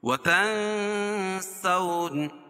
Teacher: ناک میں آواز کو چھپا کر پڑھیں گے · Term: اخفاء حقیقی